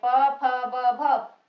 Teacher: होठ आपस में हमारे मिलते हैं, ये हमारे वर्ण कहलाते हैं ओष्ठ वर्ण